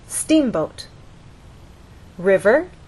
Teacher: you'll look in a dictionary and understand that the first syllable is stressed